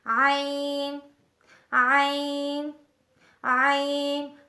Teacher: حلق درمیانے حصے سے ادا ہوتا ہے۔ وسط حلق حلق درمیانے حصے کو کہتے ہیں۔